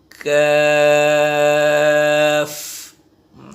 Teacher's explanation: আসলে আমরা আদায় করি 1 আঙ্গুল পরিমাণ। কাফ, হালকা একটু বাতাস চালু থাকবে, যেটা হামসের হরফ, হালকা, অতিরিক্ত নয়